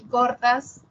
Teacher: Corta sería media posterior y central baja.